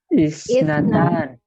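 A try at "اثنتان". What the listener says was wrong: Hilangkan depannya ya. Salah.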